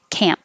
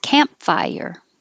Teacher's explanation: don't release the p camp just close your lips